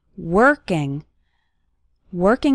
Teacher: the letter o in working has more of an er sound